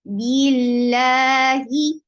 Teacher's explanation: Lafz jalala will be light because you found kasra before it.